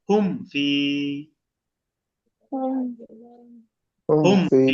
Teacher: গুণা করে পড়বো ভুল, গুণা ছাড়া পড়বেন, কারণ মিম সাকিনের পরে বা মিম নাই, এটা ফা